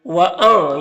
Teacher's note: نون ساکن کے بعد ذال حروف اخفا میں سے، تو نون میں اخفا ہوگا، یعنی نون کی آواز کو ناک میں چھپا کر ایک الف کی مقدار کھینچ کر پڑھیں گے۔ ذال کو باریک پڑھیں گے، را کے نیچے زیر ہے تو را کو بھی باریک پڑھیں گے۔